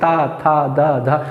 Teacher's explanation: दंत से बोला जाने वाले वर्ण है क्योंकि हमारी जीवा दांत से स्पर्श कर रही है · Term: दंती वर्ण